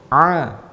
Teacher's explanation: kalau kita sempitkan dinding faring kita dinding tenggorokan kita akan menjadi ah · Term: huruf Ain